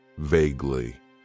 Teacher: It has 2 syllables, and the stress is on that first syllable